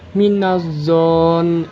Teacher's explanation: Minazon terdapat hukum bacaan gunah karena terdapat huruf nun bertasydid dibaca ditekan dan ditahan